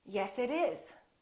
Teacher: vowels even when the words are separate for example it is we link this together and therefore the t is between two vowels so we don't say yes it is we say yes it